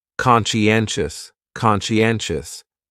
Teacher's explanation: That second syllable is what really confuses people because that sigh almost sounds like you're saying she.